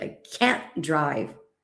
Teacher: The difference is not in the t because the t is hardly ever pronounced.